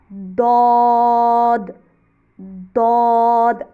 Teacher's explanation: आप ज़ुबान की साइड ऊपर दाढ़ों की जड़ से लगाएंगे तो तभी आवाज़ निकलेगी। और इसकी आवाज़ दाल के साथ मिलती है, तो इसकी आवाज़ में भारी करना है, भारीपन लाना है, क्योंकि ये बोल्ड लेटर्स में से है, तो आवाज़ मुंह के अंदर ही रहेगी, दौद, ठीक है।